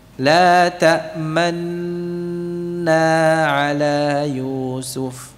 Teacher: Gunnahnya mutawwalah. Nah, seiring dengan memanjangnya gunnah itu kita iringi dengan apa? Isyarat mencucu atau ismam.